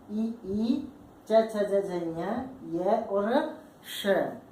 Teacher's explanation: जैसे हम ई बोल के देखते हैं, च बोल के देखते हैं, ये बोल के देखते हैं, तो हमारी जो जिह्वा है वो बीच के भाग से उठ करके तालु को स्पर्श करती है, अर्थात अवरोध उत्पन्न हो रहा है हवा बाहर आने में। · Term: तालव्य वर्ण